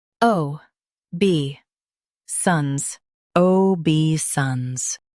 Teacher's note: Stress bei and keep sance smooth.